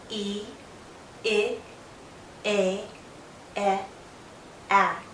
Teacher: as I go from e to a my mouth opens more more and more my jaw lowers but my lips are still spread out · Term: front valves